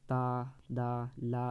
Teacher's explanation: ता और दा और ला का उच्चारण स्थान दंत से होता है।